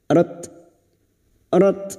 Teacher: Ta sukun yang memiliki sifat Hames dan syidah · tak sukun yang memiliki sifat hamas dan syiddah, maka bunyinya rat humul, lam ta'rif yang bersukun idhar qamariyah.